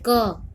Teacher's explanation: इसमें अ का उच्चारण हो रहा है क बोलने पर। ठीक है, स्वर सहित हुआ ये। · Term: पूरा क